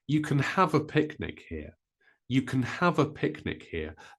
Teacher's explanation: with can we don't stress it we stress the word after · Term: word stress